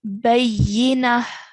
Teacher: I'm making a h sound at the end, a h with a sukoon on top. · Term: ha sakin